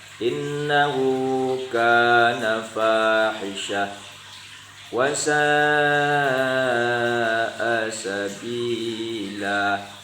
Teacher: Sa dipanjangkan 3 alif, yaitu mad wajib muttasil. Sabila juga dipanjangkan.